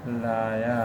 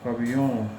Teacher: इसमें है कि हिंदी में प्राय एक साथ दो स्वर उच्चारित नहीं होते। यदि किसी शब्द में दो स्वर एक साथ आ जाते हैं तो दोनों के बीच एक व्यंजन य का आगम हो जाता है।